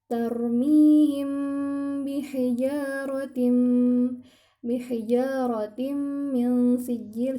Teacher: mim sukun bertemu dengan huruf ba, sehingga dia ditahan selama 3 harokat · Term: Gunnah